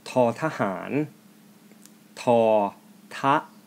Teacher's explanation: Tha has the first tone. · Tahan has the fourth and the fifth tone, respectively.